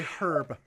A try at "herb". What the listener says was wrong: Herb, not herb. H isn't fucking silent. Herb. ERB.